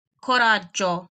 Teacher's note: make sure not to roll the R in coraggio